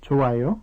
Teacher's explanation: It is also used in questions with a rising intonation to ask whether someone thinks something is good or not.